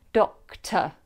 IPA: ˈdɒktə